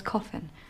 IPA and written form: ˈkɒfɪn (Coffin)